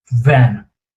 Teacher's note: You're using, that becomes your labiodental, you're using the teeth, slightly biting the lower lip, van, and the air passing through narrow space that you have.